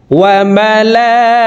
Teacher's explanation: এই লামে 4 আলিফ টান, মদের হরফের উপরে মোটা চিহ্ন বামে হামজা, মধ্যে মুত্তাসিল 4 আলিফ টানিয়া পড়িতে হয়।